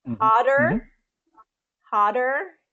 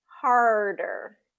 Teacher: The only difference is having that tongue pull back for that R sound. So ah and R. · So you kind of can hear that tongue pulling back for that R.